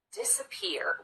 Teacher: this middle syllable we just rush through as quickly as we can disappear we get right to that third syllable that receives the · We get right to that third syllable that receives the primary stress.